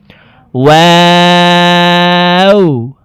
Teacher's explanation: ওয়াও হরফকে দুই ঠোঁট গোল করে দুই ঠোঁটের মাঝে ফাঁকা রেখে উচ্চারণ করব।